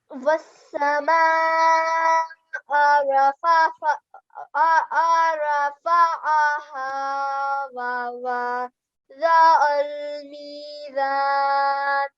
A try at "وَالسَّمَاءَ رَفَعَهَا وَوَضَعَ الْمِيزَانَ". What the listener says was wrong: Good, much better now this time.